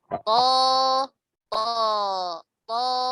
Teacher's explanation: Yang berbeda itu di pangkal lidahnya, karena terkait dengan sifatul huruf, ya. Kalau huruf to, karena sifat hurufnya tebal, ya, huruf to itu huruf tebal, maka pangkal lidahnya terangkat.